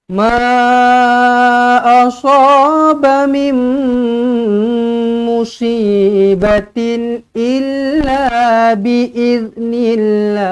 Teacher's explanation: ma 4 ataupun 5 harakat mad jaiz munfasil.